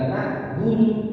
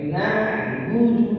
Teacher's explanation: Jadi ditekan dan dialirkan. Na'budu menggunakan ain. Hati-hati. Ya, bukan hamzah, bukan na'budu.